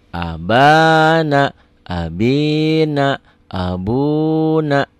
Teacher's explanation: Abana nggak boleh. A satu ketukan, ba-nya 2 ketukan. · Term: mad tobi'i